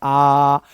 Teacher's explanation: विवृत स्वर में मुंह पूरा खुल रहा है, जितना मैक्सिमम खुल सकता है